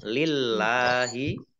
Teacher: boleh terus tetapi berhenti lebih baik alamnya ada tasdidnya dibaca dobel Allahnya dibaca tipis karena harokat di depannya kasrah